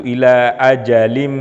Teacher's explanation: bacaan ghunnah sekali lagi keluar dari pangkal hidung kalau hidung kita ditutup tidak akan bunyi itu dan cara bacanya itu dengan ghunnah dalam pengertian mendengung ditahan sedikit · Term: Idgham Bighunnah